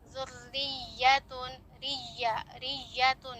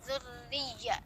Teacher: tiap-tiap ya bertasydid ketika didahului dengan kasroh maupun fathah dia harus an-nabr ya, berlaku an-nabr, di mana intonasinya itu lebih tinggi